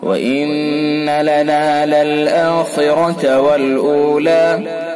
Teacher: خا پر کر کے پڑھیں گے خا کو، پر یعنی موٹا